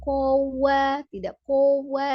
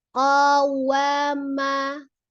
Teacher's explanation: Monyongnya hanya wa, ko-nya tidak kowa